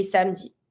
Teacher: we tend to like barely pronounce the E between the M and the D because we don't say samedi, we say samedi.